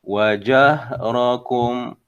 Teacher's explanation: Baik, di sini ada huruf hams yang jelas wajahrakum. Ha tu ha adalah huruf hams. Jadi kena keluarkan angin, aliran udara.